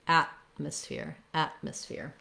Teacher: what we do here is there is a t there but i don't say atmosphere with a release t because the next syllable starts with an m i'm going to use what's called a stop t i move · an m i'm going to use what's called a stop t i move up to make the t but i release into the m